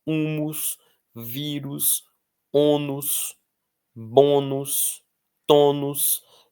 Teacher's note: Todas essas são terminadas em U seguido de S. E a força está na sílaba anterior, na penúltima.